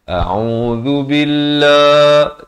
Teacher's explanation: Hamzah di pangkal, ain di pertengahan kerongkong. Zal di hujung lidah ya.